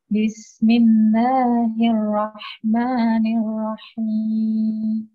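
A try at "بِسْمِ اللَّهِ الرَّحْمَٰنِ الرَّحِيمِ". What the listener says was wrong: Ro-nya sedikit lebih ditebalkan. Bismillahirrahmanirrahim.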